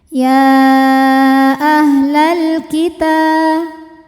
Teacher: Sebab ada alif lam yang menghadapi huruf qamariah yaitu kaf. Maka lam sukun dibunyikan dengan jelas atau disebut dengan izhar qamari.